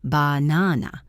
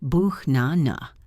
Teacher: The first and last become schwas.